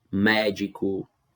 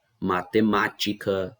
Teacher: Então, é a regra mais fácil que tem, é a regra das proparoxítonas, porque todas são acentuadas. Você só tem que ficar atento que a antepenúltima sílaba é a mais forte